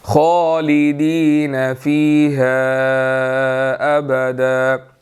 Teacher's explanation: ہا کے اوپر چھوٹی مد ہے، اس کو ہم نے 2 to 3 سیکنڈ جو ہے وہ لمبا کرنا ہے